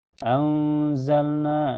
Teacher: na mad thobi'i karena ada alif sebelumnya harakat fathah dina dibaca panjang dua harakat